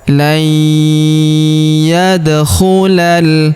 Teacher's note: huruf da berharakat sukun kita pantulkan atau kita qalqalahkan